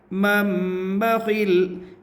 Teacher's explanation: نون ساکین کے بعد با ہے، اس لیے نون کو میم سے بدل کر غنہ اور اخفا کے ساتھ پڑھیں گے، اس کو اقلاب کہتے ہیں۔